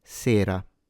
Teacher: in sera, the E is closed in standard Italian diction, sera. So it's buona, not buona, with a closed O, and it's sera, not sera, with an open E.